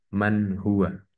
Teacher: ya nun sukun yang bertemu dengan huruf halq yaitu ha ya Nun sukunnya di sini dibaca jelas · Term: izhar halq